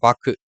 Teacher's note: சொல்லின் இறுதியில் வரும்பொழுது ஒரு மாத்திரைக்கு பதிலாக அரை மாத்திரையில் ஒழிக்கிறது. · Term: குற்றியல் உகரம்